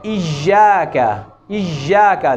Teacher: زیادہ زور دیتے ہیں تو وہ یا جو ہے جیم کی آواز دینے لگ جاتی ہے۔ ایاک، ایاک، خصوصاً جب یا کے اوپر شد ہوگی تو اس بات کا ضرور خیال رکھنا ہوگا۔